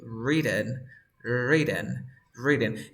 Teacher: So you say written, yeah. But then this T is between two vowel sounds. So you pronounce the T like R in Spanish.